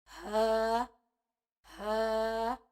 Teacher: ہا کو جب ہم ادا کریں گے تو سینے سے آواز آئے گی